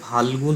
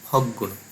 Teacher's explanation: ভিন্ন ব্যঞ্জনগুলো একই ব্যঞ্জনে পরিবর্তন হচ্ছে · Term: সমীভবন